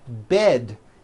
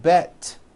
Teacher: bed has a voiced D ending it's not bet with an unvoiced T its bed with a voiced D Road also has a voiced